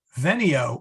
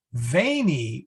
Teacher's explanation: veneo with a short e is i come vainy with a long e is i came